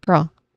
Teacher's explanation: First syllable is pro, which is unstressed and sounds like pro because the vowel sound here is a schwa sound.